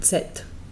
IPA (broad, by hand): tset